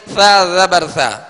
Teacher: نرمی کے ساتھ، اس میں سیٹی کی آواز بالکل پیدا نہ ہو، نرمی کے ساتھ ادا کیجئے.